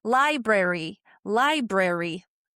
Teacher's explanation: It really is it's what we call um so you get like a secondary stress in bre and you get like a tertiary stress in re. Like everything is stressedish. It's just that lie is the biggest of them all.